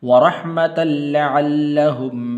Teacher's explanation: اس تا کو آگے لام کے ساتھ ملانا ہے